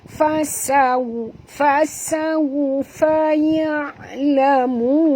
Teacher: Fasaw. Okey, waw di sini sifatnya lin, lembut. Maka muncungkan mulut perempuan